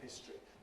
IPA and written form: ˈhɪstri (history)